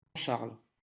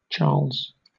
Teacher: Entonces fíjate que tenemos el dígrafo CH en las dos lenguas, pero en francés tenemos sh, Charles. en inglés tenemos che.